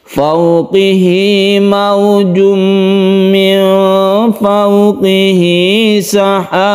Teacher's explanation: Sahab tentunya disertai dengan qalqalah, artinya memantul · Karena diapit oleh dua huruf hidup ini, maka haknya ini menjadi panjang. Ini namanya mad silah qasirah, panjangnya satu alif.